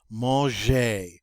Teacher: That G is a soft G because it's followed by an E, so we pronounce it like je instead of g.